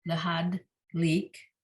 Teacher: the dalid here he's showing us is at the end of the syllable, so it does not get sounded. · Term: silent